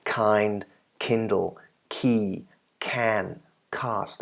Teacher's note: For the K and KH, we do not have unaspirated, however, we have aspirated